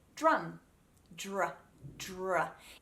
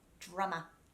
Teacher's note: That D sound becomes that muddier j sound because of the dr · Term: Chewy D